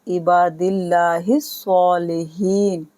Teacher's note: یہاں زیر ہے لفظ اللہ سے پہلے تو یہاں باریک پڑھیں گے